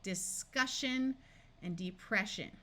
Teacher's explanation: Words where the SI takes on the sh sound include words like discussion and depression.